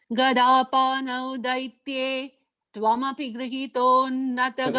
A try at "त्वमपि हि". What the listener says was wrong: அந்த இடத்துல त्वमपि hi அங்க ஒரு hi இருக்கு you don't have it So twamapi hi short hi